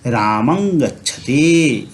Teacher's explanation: तो अनुस्वार का उच्चारण अंग के समान होगा